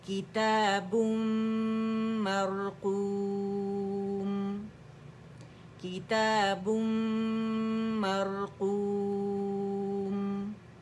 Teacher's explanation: تنوین کے بعد ہمارے پاس میم آ رہا ہے، ادغام تام بالغنہ ہو رہا ہے، کمپلیٹ مرجنگ وتھ غنہ